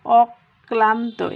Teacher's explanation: এই যে কয়ের সাথে ল যুক্ত আছে, এই ক ডাবল উচ্চারণ হয়ে গেল